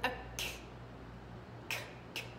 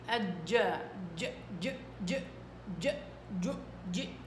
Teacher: هذه كاف مهموسه، واضح الهواء، سامع صوت الهواء